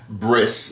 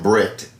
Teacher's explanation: they take the T sound on the end and put an S sound